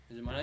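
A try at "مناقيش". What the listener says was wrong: You don't say the K.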